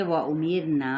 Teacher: را ساکن ما قبل کسرہ ہے تو را باریک پڑھا جائے گا